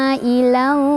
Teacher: Jadi bacanya panjang 4 atau 5 harokat. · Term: mad wajib muttasil